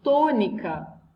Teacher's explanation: Nessa palavra, por exemplo, tônica, a sílaba tônica é o to, tá? É a mais forte.